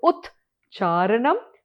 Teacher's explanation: You see there is a ch that becomes, the t kara becomes a ch